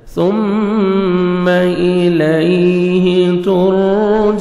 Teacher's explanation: last میں stop کریں گے، نون ساکن ہو جائے گا